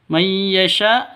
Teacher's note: Nun mati bertemu dengan ya. Cara bacanya masuk ke ya disertai dengung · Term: idgham bighunah